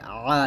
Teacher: আইনটা হলকের মাঝখান থেকে চাপ দিয়ে আ